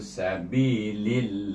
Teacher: Dan lam jalalah itu dibaca dengan nipis dua harakat